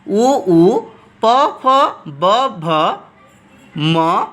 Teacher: उ प फ ब भ म comes from lips we called ओष्ठ वर्णा · So u pa fa va bha ma comes from lips. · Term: lips letter